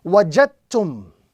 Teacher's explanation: So the dal, which has the sukun on top of it, it is going to be now read as a silent letter. So instead of reading wajadtum, we are now joining the jim directly to the ta. · The jim is connected directly to the ta.